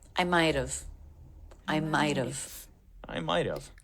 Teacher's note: It's all smooth. So he drops the H in have, which means we're linking now with the flap T.